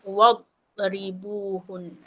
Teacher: sebab dad ni bukan huruf qalqalah. Dia bukan huruf yang melantun. Jadi kita kena telan jangan bagi melantun.